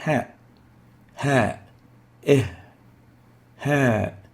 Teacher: And it is similar to the English H, pronounced as in rehab. Ha articulates at the deep throat, and that's why we classify it as a throat letter.